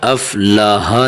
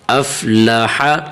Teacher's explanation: افلح، افلاح نہیں، ہا نہیں پڑھنا، اسے حا پڑھنا ہے، حا سینے سے آواز نکالنی ہے اس کی